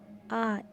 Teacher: এই স্বরধ্বনিটি উচ্চারণের আমাদের জিহ্বা সামনের পিছনে না গিয়ে কেন্দ্রস্থলেই অবস্থান করে, তাই এই স্বরধ্বনিটিকে কেন্দ্রীয় স্বরধ্বনি বলে।